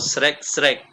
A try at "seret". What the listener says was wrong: Pakai T akhirnya nggak srek, srek. Tapi seret, seret.